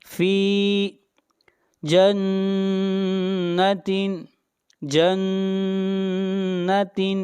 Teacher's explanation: نون کے اوپر شد ہے، غنہ ہوگا